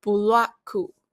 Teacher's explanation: U is inserted between the B and the L to break out the cluster. Then, after the short vowel A, the stop consonant K is doubled to create a geminate. Lastly, to avoid a consonant being at the end, another U is added after the K to the transform a one-syllable English word into three-syllable Japanese sequence, buraku.